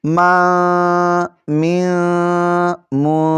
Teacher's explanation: ایسے ناک میں آواز لے جائیں گے، غنہ کریں گے